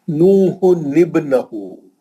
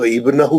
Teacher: ملا کے پڑھیں گے تو تنوین میں کا نون باقی ہے اور ہم اس کو زیر دے کے پڑھیں گے